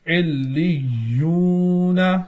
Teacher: واو ساکن اور اس سے پہلے پیش موجود ہے تو واو مدہ ہوگا، ایک الف کھینچ کر پڑھیں گے